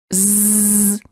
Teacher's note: You should feel a vibration in your vocal cords. This is how you know that the Z sound is voiced.